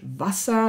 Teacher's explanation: dann wie als stimmloses S gesprochen, also Reibelaut